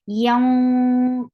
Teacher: Bu for dhamma, circle your lips. Yanqalibu, ain from your throat, the sound is short